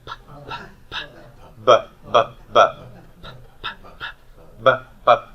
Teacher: this feature of your vocal cords vibrating is called voicing · Voicing. So with beta, your stop is voiced.